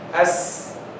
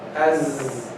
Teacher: So Sin has hams, while Zai doesn't have hams